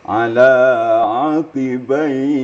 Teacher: Kalau berhenti pada aqibai, itu dia akan menjadi mat arid li sukun. Panjang boleh, panjangnya sampai 3 alif.